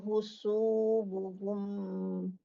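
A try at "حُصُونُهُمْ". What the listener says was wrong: Nun bukan husubuhum tapi husunuhum.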